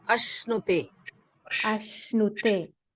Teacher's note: Yeah, it is not sakara. It is not sita, dental sa. It is sha, palatal sha.